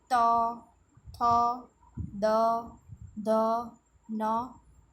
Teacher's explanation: ये वो कॉन्सोनेंट बोलते समय हमारी जो टंग है वो टीथ से जॉइंट होती है, इसके लिए इसको डेंटल कहा जाता है।